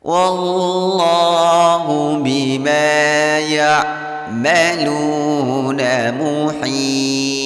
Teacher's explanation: lafaz Allah dibaca dengan tebal karena huruf sebelum lafaz Allah wawunya berharkat fathah.